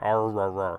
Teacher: he speaks with hard r's and that's a uniquely american thing